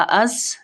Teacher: زا میں سیٹی کی آواز ادا ہوتی ہے